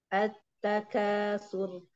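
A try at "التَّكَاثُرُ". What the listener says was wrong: Jangan ditekan huruf ta. At. Takatsur. Mungkin kita tidak ngeh apa ya sih ditekan gitu ya. Perasaan enggak gitu ya. Tapi beda antara ditekan dengan tidak.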